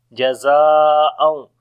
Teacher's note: After the madda letter, the next letter is hamza in the same word. So this is madde muttasil. We long 4 to 5 seconds.